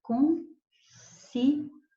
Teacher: ditongo, dois sons vocálicos na mesma sílaba, semivogal mais vogal crescente. Somente estas palavras que terminam em ditongo crescente, existe para elas a possibilidade de você transformar esse ditongo, em vez de pronunciar ditongo, pronunciar hiato, então elas vão ficar separadas.